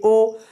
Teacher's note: आप बोलिए ओ, तो आपका ओठ भी इधर उधर हो रहा है और आपके कंठ से भी आवाज आ रही है। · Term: कंठोष्ठ